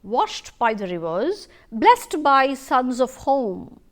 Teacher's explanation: it begins with a stressed syllable rather than an unstressed syllable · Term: trochee